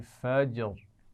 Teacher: جیم پر قلقلہ وضع کیجیے